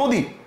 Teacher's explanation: কিন্তু এখানে দেখেন অ এর উচ্চারণ ও, অর্থাৎ আপনি অ লিখছেন অথবা অ আছে বর্ণের মধ্যে, কিন্তু আপনি উচ্চারণ অ না করে ও করতেছেন। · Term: সংবৃত